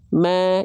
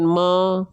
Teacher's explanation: Mim dibaca dengan vokal A kan, tipiskan pelafalannya. Ingat vokal A, ingat tipis, ingat buka mulut, sedikit senyum.